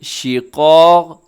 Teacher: اس میں قاف بھی موٹا ہے، پھر قاف ہے جو اس کے ساتھ بالکل پہلو میں، اس قاف کو بھی آپ نے موٹا پڑھنا ہے